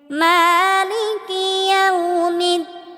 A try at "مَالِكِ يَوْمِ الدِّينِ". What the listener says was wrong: একালিফ টেনে পড়তে হবে। অনেকেই আমরা বলি মালিকি, একালিফ টেনে পড়তে হবে। মালিকি ইয়াউমিদ্দিন। মালিকি ইয়াউমিদ্দিন।